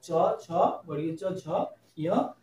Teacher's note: এটা হচ্ছে একদম নরম তালু স্পর্শ করে চ, ছ, বর্গীয় চ, ঝ, ইয়, তাই এগুলিকে বলা হয় তালব্য ধ্বনি। এগুলি তালু স্পর্শ করে বলে এগুলিকে বলা হয় তালব্য ধ্বনি